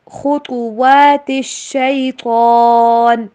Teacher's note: خاء اور طاء کو موٹا کر کے پڑھیں گے